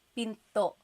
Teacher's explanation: Do you hear the glottal stop when I say pinto?